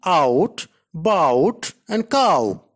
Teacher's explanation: a glide from a back open unrounded position to a back rounded vowel just above half close